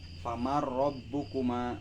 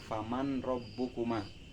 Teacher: Di sini saya contoh famarrobbukuma, dibaca famarrob, dimasukkan si nun ke ro. Jadi si nun seolah-olah dihilangkan, langsung dimasukkan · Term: idgham bilaguna